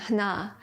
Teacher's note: Yeah, Cherokee has these interesting aspirated nasal sounds.